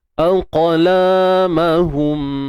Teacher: Pastikan kita lantunkan huruf qaf ini dan sertakan juga sifat tebalnya isti'la.